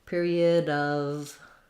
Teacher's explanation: And then your of is another vowel and a V sound. So the word of is actually a schwa and a V. So there's no O, no F sound.